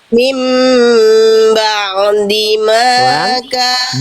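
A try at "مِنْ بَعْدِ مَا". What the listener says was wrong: Ba'dima. Di suaranya diantar Bunda, jangan ditarik lagi. Kalau ditarik gitu nanti dia. Diantar sampai melafalkan dal. Mim ba'dima.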